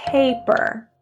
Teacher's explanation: Notice the first P is aspirated. Paper. The second P is not.